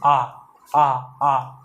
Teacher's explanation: पूरा खुला मात्र एक ही स्वर में रहता है जिसका नाम है आ। आ का उच्चारण करिए, आ।